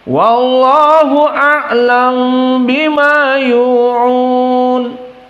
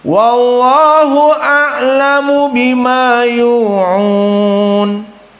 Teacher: Jadi a'lam disukunkan, iskanul mim, dan ikhfa masuk kepada ba karena dia mim sakinah. Hukumnya ikhfa syafawi. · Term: iskanul mim ma'al ikhfa